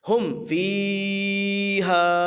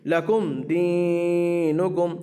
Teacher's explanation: اظہار شفوی کہتے ہیں میم ساکن کے بعد با اور میم کے علاوہ کوئی بھی حرف آئے گا اظہار شفوی ہوگا، اس میں گنہ نہیں ہوتا، یعنی آواز کو ناک میں نہیں لے جائیں گے۔